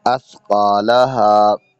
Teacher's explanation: جب سا کا لفظ ادا ہوتا ہے تو یہاں پر سیٹی کی آواز نہیں آنی چاہیے